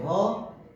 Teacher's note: ह का उच्चारण स्थान भी कंठ ही है